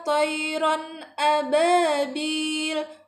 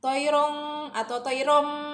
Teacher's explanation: Jadi bacanya harus jelas dan pendek tanpa dengung ya. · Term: izhar halki